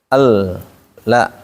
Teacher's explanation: Lam ini makhrajnya ada di ujung lidah. Ujung lidah tempelkan ke gusi atas. Al la. Kemudian saat kita menempelkan mulutnya ditarik datar la biar tidak terdengar bunyi lo nantinya.